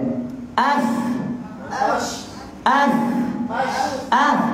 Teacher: Af tu main daripada bibir tapi campur dengan gigi. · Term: bibir gigi